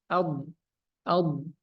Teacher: sifatnya dia jahar sifatnya nafas ditahan